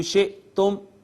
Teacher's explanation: میم ساکن کے بعد با میم نہیں ہے، لہٰذا اظہار شفوی